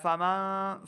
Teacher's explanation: نون ساکن کے بعد اگلا حرف شین حروف اخفا میں سے ہے، تو یہاں پہ ہم نے اخفا کا قاعدہ کرنا ہے، یعنی غنہ کریں گے، نون ساکن کی آواز کو چھپانا ہے. فمن، فمن نہیں کریں گے.